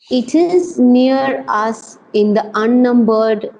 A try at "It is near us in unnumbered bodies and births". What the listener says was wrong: the is not there. The is not there. In the unnumbered, just in unnumbered.